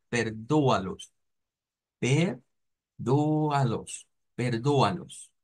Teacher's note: la palabra de perdonarlos, en este caso, no vamos a sonarla con una N, sino que va a sonar como perdóalos, perdóalos, perdóalos, así como en tres cifras, tres sílabas.